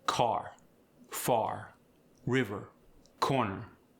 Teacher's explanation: the Appalachian accent is usually rhotic, meaning you pronounce the R.